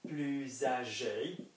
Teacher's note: it will be a Z sound not an S sound